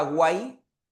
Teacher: el trictongo se forma cuando es una vocal cerrada, abierta y cerrada. Y en este caso, la que tiene que tener mayor fuerza es la vocal abierta